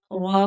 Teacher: غا پور پڑا جائے گا کیونکہ اس کے اوپر زبر ہے